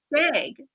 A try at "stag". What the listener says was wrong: It's just the like way that you're pronouncing the A. I was hearing like egg. I'm like, egg?